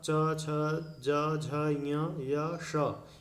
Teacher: च, छ, ज, झ, ञ, य, श, इनका उच्चारण स्थान तालु है